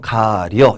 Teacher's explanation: 이 어가 여가 되는 거죠. 가리어라고 했을 때 이하고 어가 만나서 여가 됐죠. 그래서 가려 이렇게 되는 게 바로 모음이 축약됐다 이렇게 얘기를 합니다. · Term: 모음 축약